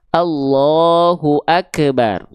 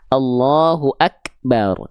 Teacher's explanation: Kaf itu enggak punya sifat memantul. Maka kalau dia huruf kaf jangan sampai dibaca Allahu Akbar.